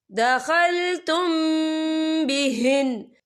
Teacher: ہم یہاں غنہ بھی کریں گے اور غنہ کی مقدار جو ہے 2 سے 3 سیکنڈ ہوگی.